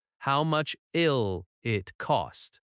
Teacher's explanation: How much will it often sounds like, How much ill it? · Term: linking